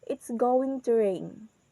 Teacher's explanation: So the in the word rain, our voice is goes down. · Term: falling intonation